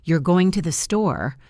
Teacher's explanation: If I say, "You're going to the store," with my voice going up at the end, it is a question.